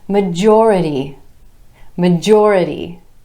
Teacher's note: with emphasis on the OR vowel sound right before our suffix